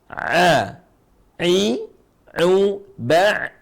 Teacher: Terus baca ain dengan suara ain yang dalam, ya. Suara a yang dalam.